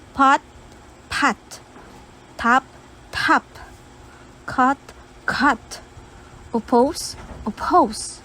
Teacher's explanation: As you can observe, H sound is being inserted in words. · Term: aspirated words